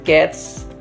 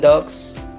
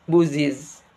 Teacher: the plural morpheme s has three allomorphs: s in cats, z in dogs, and is in buses.